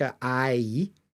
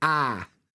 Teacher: with Northern accents we get this very like long vowel sounds